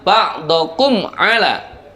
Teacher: Idhar syafawi adalah apabila ada mim sukun bertemu dengan semua huruf hijaiyah selain mim dan ba. Kebetulan di situ ada mim sukun bertemu dengan ain, maka cara membacanya suara mim sukunnya dibaca jelas.